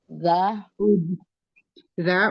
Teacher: Za itu ujung lidah menyentuh gigi gusi atas, gigi seri atas ya. Za Ujung gigi seri bagian ujung, atas ujung bersentuhan dengan ujung lidah bersentuhan dengan ujung gigi seri bagian atas.